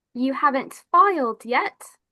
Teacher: It goes up higher for the last two words.